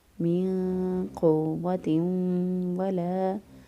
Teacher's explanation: نون ساکن کی آواز کو پوشیدہ رکھتے ہوئے ہم ادا کریں گے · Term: اخفا